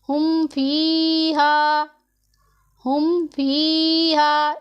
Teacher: اسے نہ ہی لمبا کرنا ہے، نہ غنہ کرنا ہے، نہ ہی اخفا کرنا ہے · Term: اظہار